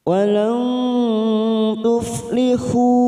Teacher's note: Masuk pada kata fi, kasrah bertemu ya sukun 2 harokat, millatihim mim sukun bertemu wawu idhar safawi, kita baca jelas millatihim walang tuf, walang nun sukun bertemu ta ikfa akrob atau ikfa hakiki, kita samarkan 3 ketuk